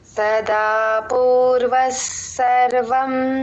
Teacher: పూర్వస్ అని స్ట్రెస్ తీసుకొని చెప్పాలి